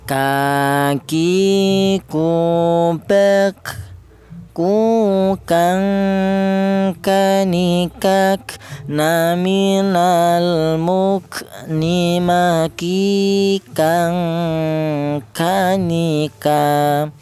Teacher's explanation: Huruf kaf ini keluarnya berasal dari pangkal lidah ya. Pangkal lidah itu lidah bagian belakang, dimana pangkal lidah atau lidah bagian belakang itu ditempati 2 huruf, yaitu huruf kaf ini dan huruf qaf.